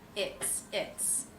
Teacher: Notice that the S in its is pronounced as an S sound, unvoiced. That's because the sound before is the T, also an unvoiced sound.